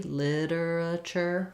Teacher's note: So practicing that slowly, literature, first syllable stress.